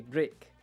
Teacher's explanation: we're changing that I to more of an E sound